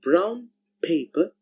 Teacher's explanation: Another case is where the sound n changing to the sound m whenever it comes before m, b, or p. Similarly, so brown paper actually sounds like brown paper.